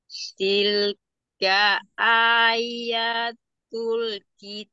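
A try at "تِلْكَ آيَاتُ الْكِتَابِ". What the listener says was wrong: tilkanya jangan diayun ya Umi. Tilka ayatul, jangan tilka, tilka ayatul.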